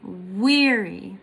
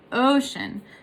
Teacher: in the two syllables the first one is stressed and the second one is unstressed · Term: stressed unstressed